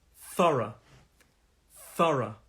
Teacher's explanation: the pronunciation of this has 2 syllables, thorough, thorough. And these 2 syllables, and the stress is on the first syllable.